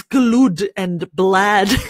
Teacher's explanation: when you say it more quickly, that L sound automatically decides to appear and it becomes glud and blad